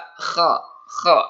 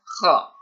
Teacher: Kha ini sama di tenggorokan tempatnya, ya. Kha, jadi sedikit berdahak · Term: huruf kha